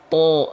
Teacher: Jadi bukan to. Bunyi vokal O yang dihasilkan karena pangkal lidah kita naik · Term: isti'la